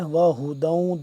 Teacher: یہ والا ہا سینے کے پاس سے اور حلق کے آخری حصے سے ادا ہوتا ہے